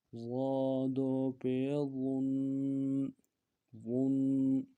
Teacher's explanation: ضا کو موٹا پڑھیں گے، موٹا کرنے کے لیے زبان کا بیچ بھی اٹھائیں گے